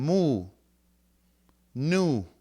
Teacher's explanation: So these are known as nasals because of the flow of air through your nose.